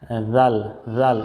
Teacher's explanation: জাল কিন্তু পাতলা হবে জিহ্বার আগা থেকে বলতে হবে উপরের দাঁতে লাগিয়ে উপরের দাতের আগায় লাগিয়ে জাল এটা জাল বলা যাবে না বা